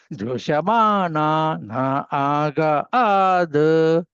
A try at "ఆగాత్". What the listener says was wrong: ఆగాత్ తకారం చెప్పండి.